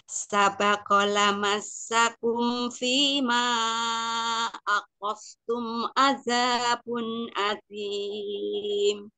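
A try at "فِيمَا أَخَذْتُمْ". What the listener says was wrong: Umi, kalau zalnya Umi sembunyi lagi, gak bunyi zal. Akhol, akhos, akhos aja. Akhol, keluar nongol. Akhol. Jangan ditekan, Mi. Akhol. Fima.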